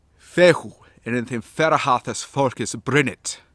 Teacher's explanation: there's the F that is stressed, the F that is stressed again, the F that is stressed yet again, and then we have the fourth stress on the B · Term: four primary stresses